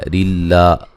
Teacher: ریلا را کو باریک پڑھا جائے گا، را کے نیچے زیریں ہیں. اور نون تنوین کا ادغام ہے لیکن بلا غنہ، غنہ نہیں کیا جائے گا